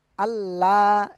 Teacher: আল্লাহ শব্দের লাম এটা পুর হয়, মোটা, সেজন্য আল্লাহ, এমন না আল্লাহ।